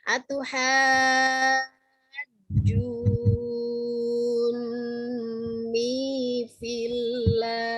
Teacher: antara kita membaca haju ya dengan fillah hendaknya disamakan panjangnya